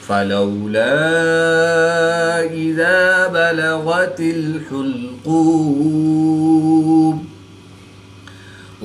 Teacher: الف مدہ کے بعد حمزہ دوسرے کلمے میں ہے تو یہاں پر مد منفصل ہوگی، 2 سے 3 الف تک کھینچ کر پڑھیں گے